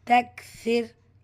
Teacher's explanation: ஸோ இந்த ரா சுக்குனை ஹெவியாக ஓத வேண்டாம், லைட்டாக ப்ரொனவுன்ஸ் பண்ணால் போதும்.